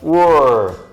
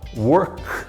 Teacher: a última letra, antes de colocar o sufixo, ele é voiceless, não tem som.